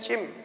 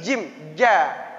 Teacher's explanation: Huruf jim jangan cim, tapi jim. Jangan keluar desisnya cim.